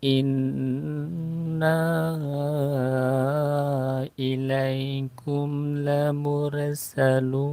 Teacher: ada nun bertasydid harus ditahan ya, dipanjangkan